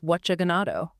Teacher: She took going to, she deleted the ing sound